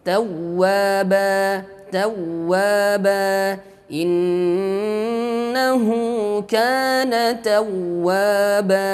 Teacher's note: waw bertasydid, an-nabr ada hentakannya, ada tekanannya sedikit. Tawwaba, jangan hanya sebatas tasydid tawwaba, tawwaba, akan tetapi ada sedikit tekanan ataupun hentakannya karena di sini an-nabr.